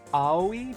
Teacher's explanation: it's basically one word with only three vowel sounds and no consonants